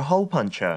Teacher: 뒤에 R 사운드 역시도 없으니까 그냥 펀처 이렇게 발음되는 거죠